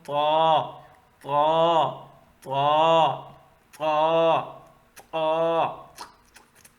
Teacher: اس کو تا کر کے باریک نہ پڑھے، تا نہیں، طا. زبان کو پھیلا کے نہیں بلکہ تھوڑا سا گول کر کے